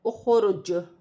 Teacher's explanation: حمزہ خا پیش اخ، را جیم پیش رج، اخرج، وقفاً، اخرج۔ جیم بھی حروف قلقلہ میں سے ہے، وقف کی صورت میں وقف کرتے وقت قلقلہ پیدا ہوگا